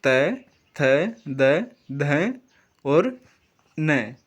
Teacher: दंतीय वर्ण जो होते हैं इनका उच्चारण दांत से होता है